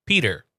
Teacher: There's a D in there. So, it's P and then you say Dur.